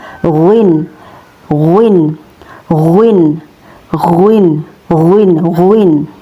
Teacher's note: keluar dari bagian tenggorokan yang paling dekat dengan rongga mulut. Ya, tepatnya persentuhan antara bagian belakang lidah dengan ujung uvula. · tepatnya persentuhan antara bagian belakang lidah dengan ujung uvula. atau daging yang tersambung dengan langit-langit. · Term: huruf ghin